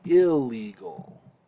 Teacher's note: the noon assimilates into the L and we say illegal